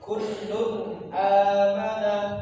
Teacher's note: Di sini tanwin un ketemu dengan hamzah a, maka dibaca jelas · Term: izhar halqi